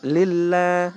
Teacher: huruf Allah sebelumnya kasra, bacanya tipis